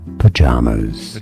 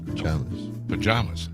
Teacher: stress on the second syllable three syllables in total